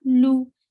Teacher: circle your lips and give a very short sound. Very sharp sound.